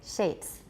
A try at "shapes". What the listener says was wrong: Don't round shapes too much. Watch. A lot of you are saying shapes, but it's shapes.